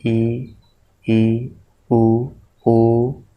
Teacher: जिन स्वरों के उच्चारण में मुख द्वार लगभग बंद ही रहता है, मतलब लगभग बंद रहता है, पूरा नहीं बंद होता, लगभग बंद होता है, तो इसको हम कहते हैं समृद्ध।